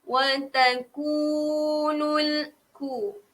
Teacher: Ku panjang dia 2 harakat.